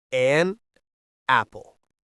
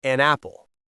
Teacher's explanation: The N sound from an attaches to the A in apple. It sounds like one word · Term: connected speech